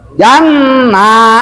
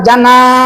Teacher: Janna jangan jana salah. Awas, kalau ada nun musyadah dan juga ada alif berarti panjangnya harus dua. N-nya dipanjangkan, nanya juga dipanjangkan.